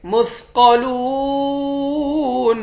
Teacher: इस मीम को तशदीद वाले मीम के साथ मिलाकर यहाँ पर गुन्ना करेंगे। मुस्क़लून, क़ाफ को मोटा पढ़ेंगे, लाम को वाव के साथ मिलाकर वाव को एक अलिफ के मिक़दार खींचकर पढ़ेंगे, आखिर में नून साकिन है।